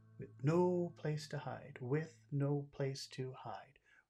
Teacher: No is a big word here. And hide is also big. No, hide. We make those words big.